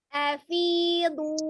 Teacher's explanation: huruf bod sisi lidahnya menyentuh geraham atas ya. Kalau sisi lidah kiri, geraham kiri atas ya.